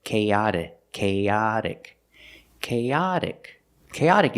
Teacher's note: a sound k k but we move the stress K and the t is the fast D sound